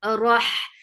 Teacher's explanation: Down, wa for fatha open jaws, the sound is short. Rah, give takrar in ra, vibration in ra, and then attach with ha. · Rah, give takrar in ra, vibration in ra, and then attach with ha. Ha will get sifa of hams and rakhawa. And ha is from middle part of your throat.